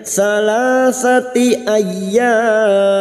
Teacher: Ay masuk pada huruf ya yang bertasdid hanya masuk tanpa mendengung.